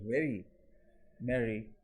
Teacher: among the thais the trilled pronunciation